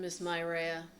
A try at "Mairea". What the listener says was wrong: Mairea, but you have to roll the R.